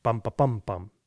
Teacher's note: there's this relentless second last syllable stress